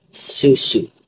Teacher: Susu kita boleh rasa kat dalam tu susu. Gigi dirapatkan, udara terhalang. dan lidah hampir tersentuh dengan gusi atas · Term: bunyi S